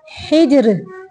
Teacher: रा को साकिन करते हुए बारीक पढ़ेंगे क्योंकि रा साकिन पीछे जीम भी साकिन है और उसके पीछे ज़ेर है